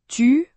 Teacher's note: Le U français se trouve entre le i et le ou.